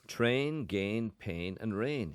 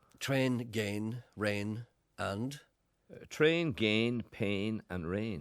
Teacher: a lot of people in belfast pronounce those words with two syllables